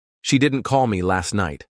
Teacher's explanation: Emphasis on didn't and last. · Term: sentence stress